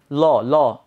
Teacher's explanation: আমার জিহ্বার ডগা কোথায় গিয়ে আঘাত করতেছে বা কোথায় স্পর্শ করতেছে হচ্ছে দাঁতের দন্তমূলে, দাঁতের মূলে, গোড়ায়। সো স্পর্শ করার পর যখন জিহ্বাটা হচ্ছে পড়ে যায় তার জায়গায়, আবার ফেরত চলে আসে ল বলে নিচে নেমে আসে, তখন জিহ্বার নিচ দিয়ে দুই পাশ দিয়ে বায়ু বেরিয়ে যায়। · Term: পার্শ্বিক ব্যঞ্জন